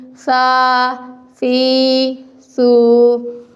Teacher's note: سا کو ادا کرتے وقت زبان کی نوک جو ہے سامنے والے دانتوں کے کنارے سے لگے گی، یہاں سیٹی کی آواز نہیں آئے گی